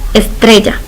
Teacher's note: estrella, que su mayor fuerza de voz es tre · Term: acento prosódico